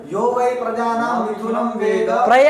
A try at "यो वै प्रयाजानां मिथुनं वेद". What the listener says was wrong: प्रजानम, देख के बोलो पंक्ति, नहीं चाहिए मुझे ऐसा अंड बंड। प्रजानम बोल रहा है, प्रयाजानम तुम्हारे बाप ने लिखा है क्या?